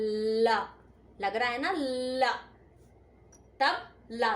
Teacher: जो अपनी जीभ का पॉइंट है पॉइंट उसे पीछे वाले तालू से लगाना पड़ेगा। ल तब ल साउंड निकलेगा।